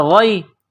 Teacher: جس طرح انسان گلے سے بلغم نکالتا ہے اس طرح اس غین کو نکالیں گے۔ غین کو یا کے ساتھ پلس کرنا ہے۔